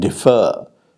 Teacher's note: the difference between let us say the pair differ and defer now defer has the second syllable stressed